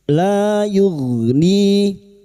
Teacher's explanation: huruf ghain sukun, hati-hati jangan dipantulkan. Huruf ghain yughni, ni kasrah diikuti sukun 2 harokat matabi'i, 2 harokat kita panjangkan.